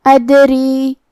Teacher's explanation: را کے نیچے زیر ہے تو را کا حکم ہے ترقیق، ہمیں حرف الرا کو پتلی آواز میں پڑھنا ہے · یہاں ہمیں دال کو قلقلہ سے پڑھنا ہے اور قلقلہ کا معنی ہے حرف ساکن کو ہلانا، تو ہم حرف الدال کو ہلاتے ہوئے یہ کلمہ کو پڑھیں گے